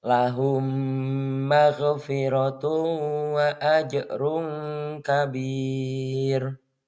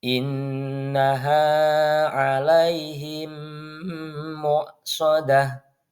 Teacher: meleburkan mim sukun ke dalam mim berikutnya, sehingga menjadi satu huruf mim bertasydid yang dibaca dengan dengung atau gunnah dan ditahan sekitar 2-3 ketukan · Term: idgham mimi